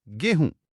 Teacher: बिल्कुल गोधूम में जो ध था वो बोलते-बोलते ह बन गया। और जो म की ध्वनि थी वो नाक से होते हुए चंद्रबिंदु में बदल गई। गोधूम से गोहूम और फिर बन गया गेहूं।